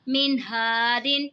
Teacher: یہاں پہ دیکھیں جی نون ساکن ہے، نون ساکن کے بعد حروف حلقی کا ہا رہے تو یہاں پہ بھی اظہار ہوگا، یعنی غنہ نہیں کرنا، نون ساکن کی آواز کو بالکل ظاہر کر کے پڑھنا ہے۔